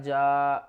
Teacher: क़द जीम अलिफ मद ज़बर जा, बड़ी मद है तो इसको हमने 5 अलिफ की मिकदार खींच कर पढ़ना है